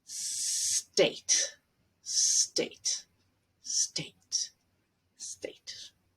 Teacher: adding an E before S plus consonant. For example, for the word state would be to try to hold an S, state.